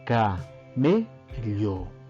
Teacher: Nos damos cuenta que la me suena más, por lo tanto es la sílaba tónica. Por lo tanto también es la sílaba en la que se encuentra el acento.